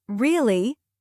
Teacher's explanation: if I say, Really? with a falling tone, it sounds like I'm confirming something